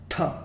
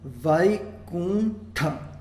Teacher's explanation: Esse Ta é a versão aspirada do T, com a língua enrolada.